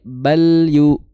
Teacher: Ujung lidah bertemu dengan gusi gigi dari atas, bal itu lam, bal, ya, jangan sampai bala, bala, tapi bal yu ditahan, jangan sampai berbunyi pantulan